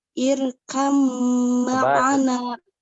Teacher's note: mim bertasdid, maka ditahan